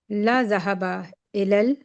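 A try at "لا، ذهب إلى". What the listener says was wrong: ला के बाद थोड़ा रुक जाया करें। ला जहबा अलग करके पढ़ें। यहाँ पे थोड़ा सा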